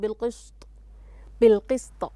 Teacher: ضبطت السين فلم تنطقها صاد